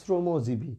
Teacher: আর দীর্ঘের উচ্চারণ রস্যই হয়, তাই উচ্চারিত রূপটা দেখো শ্রমজীবী। দেখেছো আমি বানানে লিখছি তালবস্য, কিন্তু উচ্চারণে কিন্তু দন্তস্ব